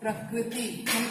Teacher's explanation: आप लोग इसको उड़िया में रू कहते हो, लेकिन हिंदी में हम इसको री कहते हैं